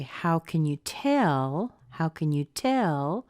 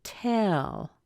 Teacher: going to find the word that is most stressed and then we're going to have a rising intonation with a fall